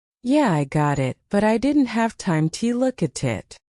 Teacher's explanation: But in fast speech, it becomes, "Yeah, I got it, but I didn't have time to look at it." Notice how the tea disappears. How words glue together. · Notice how the T disappears, how words glue together. Got it, have time, look at it, look at it.